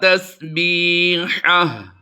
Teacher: हा और हा को हमने दोनों को मिलाना है।